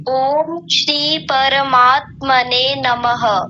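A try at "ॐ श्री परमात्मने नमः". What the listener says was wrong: वाह क्या सुंदर है, बहुत ही सुंदर।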